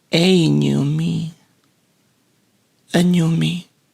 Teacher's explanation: the last part me is actually emphasized